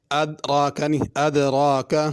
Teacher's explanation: دال کو تھوڑی سی جنبش اور حرکت دے کے پڑھنا ہوگا۔